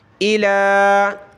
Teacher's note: لام کو اوپر کھینچنا ہے ایک الف کی لمٹ میں